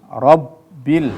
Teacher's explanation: ketika tasydid berada di atas huruf ba, maka wajib diayun atau dihentakkan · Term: nabroh